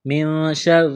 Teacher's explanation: نون ساکن کے بعد شین ہے، حروف اخفا ہے، غنہ کریں گے، آواز ناک میں چھپائیں گے۔ را کے نیچے زیر ہے، را کو باریک کرنا ہے۔ را کو لام کے ساتھ ملائیں گے۔